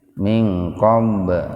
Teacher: nun mati ketemu dengan kop secara terpisah jadi betul-betul dibaca samar